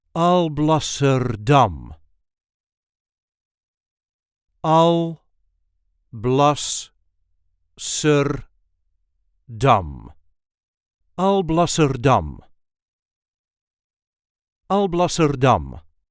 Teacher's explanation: There is a light emphasis on the last syllable